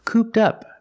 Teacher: the Ed is pronounced with a t sound link it with the next word up